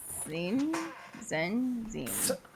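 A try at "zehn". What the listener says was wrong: With a plosive t. Can you say cuts? almost said the German word for cat, which is Katze, but also that same t that you just said, put it in front of the in. Almost a little longer on the e.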